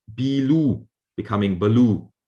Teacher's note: you just reduce the first syllable make it shorter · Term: reduction of words